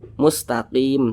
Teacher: Huruf mim tidak dibaca panjang, makanya kita sukunkan atau kita matikan begitu. Sehingga dibaca mustaqim, tidak dibaca mustaqimin, tidak, tapi dibaca mustaqim. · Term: mad arid li sukun